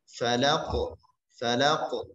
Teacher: Nah, di sini pada surat Al-Falaq semua ayat diakhiri oleh huruf-huruf qalqalah. Kita membacanya dengan suara syiddah, cepat, kuat, kemudian yang kedua adalah jahar, nafas yang tertahan.